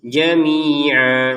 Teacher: Kalau kita baca berhenti menjadi jamia panjang dua harakat